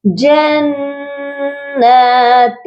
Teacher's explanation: جنات کی جو نون ہے یہ مشدد ہے، یہاں پر غنہ ہوگا